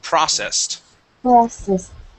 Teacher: this word is processed, with the accent at the very beginning of the word